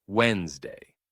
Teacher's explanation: The common way to say it is Wednesday. The d and n blend together, skipping the middle sound.